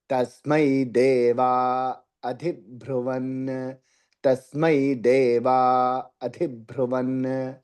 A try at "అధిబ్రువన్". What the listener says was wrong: భ్రువు ఒత్తులేదండి. తస్మై దేవా అధిబ్రువన్